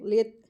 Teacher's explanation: तो के लिए ज़बान को मोटा करेंगे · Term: हैवी लेटर